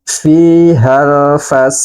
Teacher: huruf Dal harus kita pantulkan